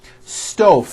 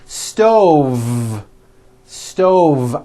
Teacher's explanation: I should have said stove stove I cooked dinner on a hot stove with a voiced V